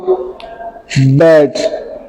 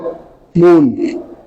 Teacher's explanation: both upper and lower lip produce these sounds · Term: बाइलिबियल साउंड्स